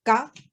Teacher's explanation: So that's the first letter, ga, the sharp sort of high tone ga